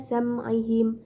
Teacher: terdapat hukum bacaan idhar safawi karena terdapat mim sukun bertemu huruf ain dan dibaca jelas